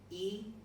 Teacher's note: E is an example of a high, front, spread, and long vowel